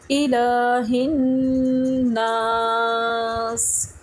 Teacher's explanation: اسی طرح جب ہم نے پڑھا الا، یعنی لام کھڑی زبر لا، اس کو بھی ہم 1 الف کے برابر کھینچیں گے